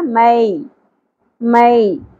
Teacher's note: یا ساکن سے پہلے زبر حرف لین ہے نرمی سے پڑھیں گے